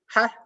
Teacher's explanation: Jadi suaranya langsung terputus